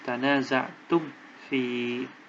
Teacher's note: Nah, maka harus dibaca idhar. Idhar itu artinya jelas. Mim sukunnya dibaca jelas.